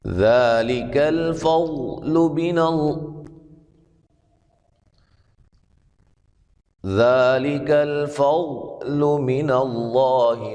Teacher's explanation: ضاد کو موٹا ادا کریں گے ، لفظ اللہ کو موٹا ادا کریں گے، اس سے پہلے